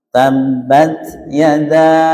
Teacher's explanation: Pas gu ya tidak ke sana mestinya tabbat sekedar lepas nafas pada makhraj ta tabbat gitu aja yada kita panjangkan sampai empat ya